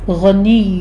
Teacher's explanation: وَرَبُّكَ الْغَنِيُّ میں آپ نے دھیان رکھنا ہے کہ لام کے اوپر آپ نے جھٹکا نہیں دینا، کل نہیں کہنا، کل سٹاپ کرنا اس کو، غین کو پر پڑھتے ہوئے آگے یا کے اوپر تشدید ہے، سختی کریں گے